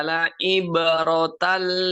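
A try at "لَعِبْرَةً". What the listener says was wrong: La'ib, huruf ain mohon untuk diperjelas lagi. Posisi ain itu di mana? Makhraj huruf ain.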